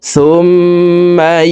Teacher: তাসদীদওয়ালা মিমের সাথে ৩ সেকেন্ড পরিমাণ গুন্নাহ করে পড়ব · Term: ওয়াজিব গুন্নাহ